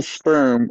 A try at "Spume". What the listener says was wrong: Spoom, spoom, spoom. keep sounding like you keep saying sperm.